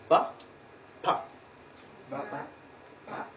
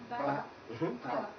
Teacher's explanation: but then it is released with some force. So this kind of sounds, the place of articulation is at the point of lips. And that is why we call them bilabial.